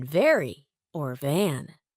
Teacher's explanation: the V sound is made by placing your upper teeth on your lower lip and vibrating